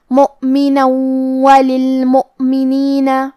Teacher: یہاں نون پہ تنوین زبر ہے پھر حرف الواو ہے، واو حروف الادغام میں سے ہے تو ہم یہ حکم کو غنہ اور تشدید کے ساتھ ادا کریں گے